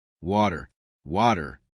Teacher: In Indian English, your tongue touches the roof of your mouth for TN. In American English, the tongue taps behind the teeth like a drum.